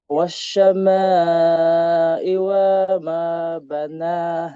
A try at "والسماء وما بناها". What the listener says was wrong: Wassa. Hindi siya wasyama. Wassa. Sin.